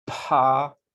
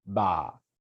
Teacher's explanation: If you go like this, pa, ba, and exaggerate a little bit, pa, ba, okay? When you make that pa sound, you can feel a little puff of air.